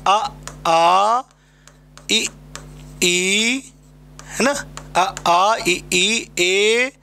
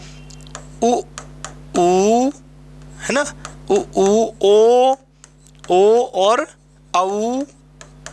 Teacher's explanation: में व्रत नहीं बनता है उन्हें कहते आव्रत मुखी स्वर और जिनको बोलने में आपके ओठों से व्रत बन जाता उन्हें कहते हैं वृत मुखी स्वर